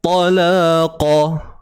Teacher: Huruf ta tebal ingat tu. Satu harakat je, jangan bantai dua pula.